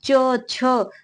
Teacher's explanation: क्योंकि इनका उच्चारण अब च छ, तो इनका उच्चारण करते समय जो है जिह्वा स्पर्श भी कर रही है और वायु मुख से निकलने के लिए संघर्ष भी कर रही है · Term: स्पर्श संघर्षी व्यंजन